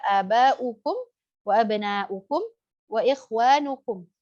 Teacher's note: jadi dham, kumpulkan dua bibir ke arah depan. Ya, seperti huruf waw, kita membaca huruf waw seperti itu.